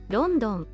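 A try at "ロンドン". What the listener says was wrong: Ron, so it's a ron, rondon. It's more a rondon than a London. Rondon.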